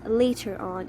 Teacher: you see here it's coming the schwa is before our and there is a vowel after R so this R is pronounced